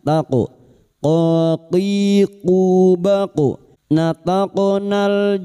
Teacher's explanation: qof sukun huruf qof yang mati asli di tengah kalimat qalqalah sugroh